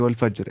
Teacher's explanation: तो रा को पुर आवाज़ पढ़ेंगे